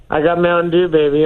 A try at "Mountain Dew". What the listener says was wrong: It's Mountain Dew, not Mountain Ew.